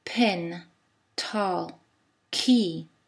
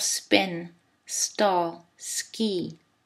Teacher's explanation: en anglais quand les consoles sont au tout début d'une syllabe on ajoute une petite bouffée d'air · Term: aspiration